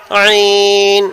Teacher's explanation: عین حروف حلقی ہے یعنی درمیانی حلق سے ادا ہوتا ہے، تو یہ درمیانی حلق سے ہی ہم ادا کریں گے.